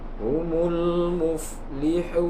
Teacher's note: Dan pada akhir kalimat dari ayat kedua sampai ayat kelima tersebut, pada akhir kalimat nun dibaca sukun dan mat sebelumnya, mat asli, dipanjangkan sedikit, disebut dengan mat arid lis sukun. Mat arid lis sukun karena terdapat di akhir kalimat, sedangkan huruf yang terakhir yaitu nun dibaca sukun pada saat berhenti.